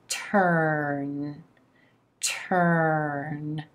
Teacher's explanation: Adding then the consonant, the final consonant in, the tip of the tongue coming back up to that alveolar ridge for the in consonant and air traveling through the nose. Turn, turn.